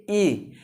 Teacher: ई में देखिए जो जिह्वा होती है ना, जिह्वा का अग्र भाग थोड़ा सा मुड़ता है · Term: अग्र स्वर